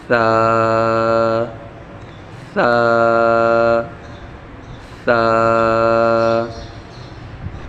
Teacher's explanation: سا کو پڑھتے وقت بالکل نرمی کے ساتھ زبان کی نوک اوپر والے دانتوں کے ساتھ لگا کر نرمی کے ساتھ پڑھیں گے